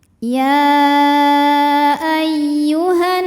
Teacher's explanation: ada alif lam yang menghadapi huruf Syamsiah yaitu huruf nun maka alif lam tidak kita baca atau disebut dengan Idgham Syamsi karena cara bacanya diidghamkan atau di masukkan